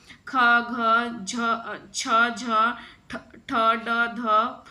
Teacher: ऐसे वर्ण जिनके उच्चारण में श्वास अधिक मात्रा में निकले, हंकार की ध्वनि उत्पन्न हो, महाप्राण कहलाते हैं। प्रत्येक वर्ग का दूसरा, जैसे ख हो गया, दूसरा समझ रहे हैं ना, दूसरा, फिर चौथा घ हो गया।